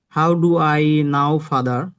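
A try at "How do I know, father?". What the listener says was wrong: নাও না, নো, নো জানা, নো। হাউ ডু আই নো ফাদার?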